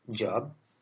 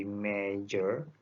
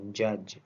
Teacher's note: the sound j is accompanied by the vocal fold vibration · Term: voiced alveopalatal affricate